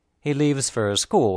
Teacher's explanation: the stressed words are leaves and school the word for is unstressed and pronounced fer fer Shur now